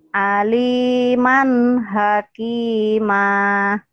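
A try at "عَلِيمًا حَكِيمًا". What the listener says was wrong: hakimah, jangan ada haknya. Jangan hakimah, aliman hakimah.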